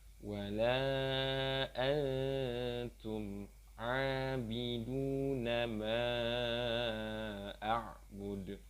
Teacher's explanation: Jadi pembacaannya adalah antara huruf N dengan huruf eng. Jadi di antaranya samar-samar. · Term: ikhfa